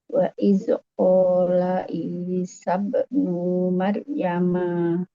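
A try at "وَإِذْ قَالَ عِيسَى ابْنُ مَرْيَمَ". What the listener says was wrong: Wa idz qala Isa bin Maryam. Lo-nya pendek. Isa bin Maryam. Jadi sukun karena berhentinya di sini.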